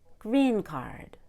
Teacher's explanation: the word card was much lower than green green card up down energy relax green card the Russian needs